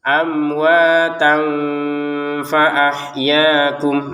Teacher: bertemunya tanwin dengan huruf fa dibacanya samar.